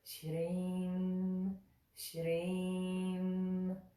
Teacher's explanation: So this doesn't have the Anusvara at the end. So we just bring the lips together for that sound.